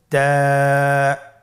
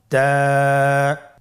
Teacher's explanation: জিহ্বার আগা সামনের উপরের 2 দাঁতের গোড়ার সঙ্গে লাগিয়ে উচ্চারিত হয়।